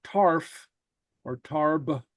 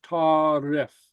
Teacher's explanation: you'll notice we insert a helping vowel